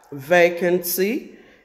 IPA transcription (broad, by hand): ˈveɪkənsi